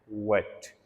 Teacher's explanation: So both the lips जो हैं वो राउंड शेप के अंदर आते हैं, वेट।